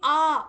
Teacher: তুমি আ উচ্চারণ করো দেখবে ধাক্কা খাচ্ছে না